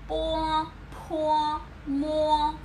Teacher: Đây là âm hai môi, mím hai môi ở giữa. Chú ý đừng nhầm với bờ của tiếng Việt nhá.